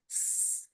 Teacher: Nah, harus sampai ada bunyi yang desis yang nyaring sekali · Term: sin